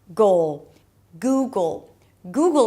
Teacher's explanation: Imagine like you have an O sound right there in the middle between the G and the dark L.